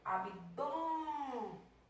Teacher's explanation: É um timbrezinho fechado, por isso que vai receber esse maravilhoso acento circunflexo.